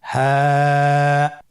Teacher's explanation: হা হরফটি উচ্চারণ ক্ষেত্রে অবশ্যই বারিক হবে এবং 1 আলিফ টেনে পড়তে হবে।